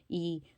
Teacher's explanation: देखिए स्वर संवृत कौन सा है, तो जो स्वर संवृत है छोटी ई, तो इसको बोलेंगे तो ज़्यादा मतलब मुंह हमारा नहीं खुलेगा